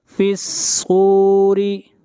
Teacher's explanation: فِي الصُّورِ، فا کو ملائیں گے صاد کے ساتھ اور صاد کو موٹا پڑھیں گے، صاد حروف مستعلیہ میں سے ہے، اور را کو یہاں پر باریک پڑھا جائے گا اس لیے کہ را کے نیچے زیر ہے